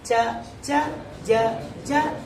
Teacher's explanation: ಭಾಷೆಯಲ್ಲಿ ತಾಲು ಎಂದು ಕರೆಯುತ್ತಾರೆ ಏನಂತಾರೆ ಇದಕ್ಕೆ ತಾಲು ತಾಲು ಅಂದ್ರೆ ಮೃದುವಾದ ಮಾಂಸ ಕೆಳಭಾಗದ ಹಲ್ಲಿನ ಹಿಂಭಾಗ ಇರುವಂತ ತಾಲು ಆ ಭಾಗದಲ್ಲಿ ಈ ತುದಿನಾಲಿಗೆ ಬಂದು ಕೂತ್ಕೊಂಡು ಬಿಡುತ್ತೆ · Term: ಚವರ್ಗ